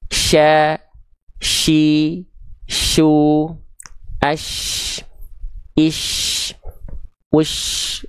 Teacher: Jadi ketika kita melafalkan shin itu tengah lidah kita naik. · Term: huruf shin